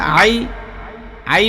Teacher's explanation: আ এর মধ্যে কোন টান নাই